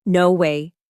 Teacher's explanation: Let your voice rise slightly. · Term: intonation